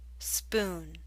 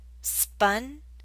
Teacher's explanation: the ooh in spoon is longer